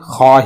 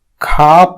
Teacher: عربی میں صرف خا ہے، کھا نہیں ہے جو اردو اور ہندی میں پایا جاتا ہے